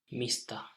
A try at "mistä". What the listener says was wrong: And the last letter is not a, but a. The sound which we can find from the word cat. If it feels that it's hard to pronounce, we think about the word cat, mitä, mistä. It's always better to go to some familiar word like cat and then convert it over.